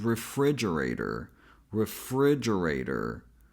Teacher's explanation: the second syllable is the most stressed syllable in this word and we pronounce it as f with a relaxed I sound as in sit. · the third syllable which sounds like j. A j sound as in jack plus a schwa sound. · And the fourth syllable is the second most stressed syllable in this word, and we pronounce it as ray, same A sound as in hey. Then in the last syllable, T is actually a flap T, as we see in words such as butter and water. Then O, as I mentioned, is a schwa.